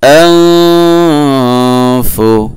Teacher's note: নুন সাকিনের পরে ফা আসছে, ইখফা গুন্না হবে, ইখফা। আনফু।